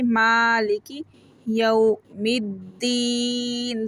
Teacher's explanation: میم کو 1 فنگر کھینچ کے پڑھیں گے